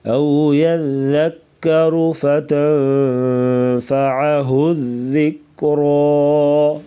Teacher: او یذکر یہاں پر اخفاء مع الغنہ ہوگا، یعنی ناک میں آواز چھپا کر غنہ کرنا۔ او یذکر فتنفعه الذکریٰ، وقفاً را کو پر پڑھیں گے موٹا۔